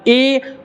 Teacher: अब ए यहाँ सांड से और तालु, ए, तो ए जब ये बोलेंगे तो मेरा जीभ जो है वो तालु में सट रहा है, और फिर आवाज साउंड कहाँ का रहा है, ए यहाँ का। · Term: कंठ तालु